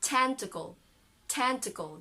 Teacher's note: you have a schwa there then no vowel sound between k and l